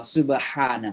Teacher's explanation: Ha ain sama tempat keluarnya tenggorokan tengah ya.